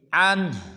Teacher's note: بعض مسلمان پڑھتے ہیں ورضوا، یہ بالکل غلط ہے، پڑھیں گے ورضوا عنہ۔ جب عنہ پہ وقف کریں گے تو عنہ کی ہا کو خوب ظاہر کریں گے